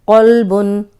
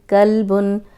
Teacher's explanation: قوف موٹا ہے اور یہ کاف باریک ہے · قلبن کا مطلب ہے دل، اور اگر ہم اس کو کلبن پڑھیں گے تو اس کا مطلب ہے کتا۔ کلبن موٹے قاف سے اگر پڑھیں گے تو دل ہے، اور باریک قاف سے پڑھیں گے تو اس کا مطلب ہے کتا